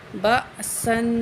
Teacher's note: حمزہ کو ساکن ہے تو اس کو ہم جھٹکے سے پڑھیں گے